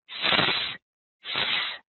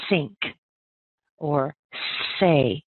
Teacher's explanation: you want to make sure that you end up with that unvoiced s sound